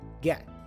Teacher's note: It's a stop T or stop consonant that we have there.